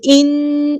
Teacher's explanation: نون پہ غنہ زمانی ہو رہا ہے، ایک الف کے برابر رکیں گے